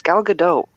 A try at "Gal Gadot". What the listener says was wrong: That's not how it. No, it's a hard T at the end. We looked it up. That's how the Israelis pronounce it.